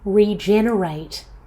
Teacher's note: in regenerate the stress is on the second syllable